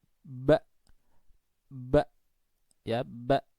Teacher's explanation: ketika kita membaca Hamzah mati maka pita suaranya itu terkatup jadi dari buka kemudian terkatup buka katup lah itu bacanya seperti itu Mamanya Mbak berharokat fathah